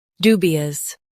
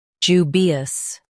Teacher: ju bi us jubious ju bi us jubious US says do, UK says ju.